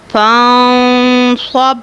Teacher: نون ساکن کو ہم ناک میں آواز لے کر جائیں گے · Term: اخفا